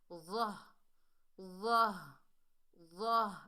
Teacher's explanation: یہ چھوٹی ہا ہے، حلق کے اس حصے سے ادا ہوتی ہے جو ہمارے سینے کی جانب ہے